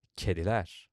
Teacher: Kedi ends in a front vowel, so it becomes kediler.